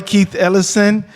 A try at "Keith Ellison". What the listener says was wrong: But you said Keith Ellison too fast. Yeah, it sounded like smushed.